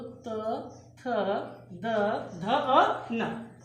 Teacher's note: ता जब बोलेंगे तो हमारी जो जीभ है वो हमारे दांत को कहीं ना कहीं स्पर्श करेगी। जैसे त, थ बोलो, देखा ये बोलो, त, थ, द, ध और न।